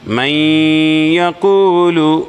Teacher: نون کا ادغام کیا جائے گا یا کے ساتھ میں۔ من یقول، یہ یا کے اوپر زبر کی حرکت ہے، جلدی پڑھیں گے، تھوڑا بھی نہ کھینچیں گے، جیسے یا۔